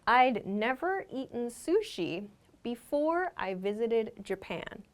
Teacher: because we only use had we just make a d sound